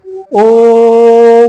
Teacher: ओम बोलते हैं तो बहुत दूर देर तक उच्चारण करते हैं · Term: प्लुत स्वर